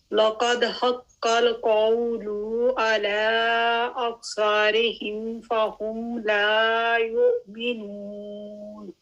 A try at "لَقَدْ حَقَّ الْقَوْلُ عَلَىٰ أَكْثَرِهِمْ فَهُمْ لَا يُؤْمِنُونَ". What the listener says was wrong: جی اس میں ایک تو لقد لام جو ہے وہ لائٹ ہے، لا نہیں کرنا اس کو، لقد ٹھیک ہے، لام لائٹ ہے.